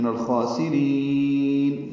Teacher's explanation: سین باریک جلدی سے پڑھیں گے، را باریک پڑھیں گے، لمبا کریں گے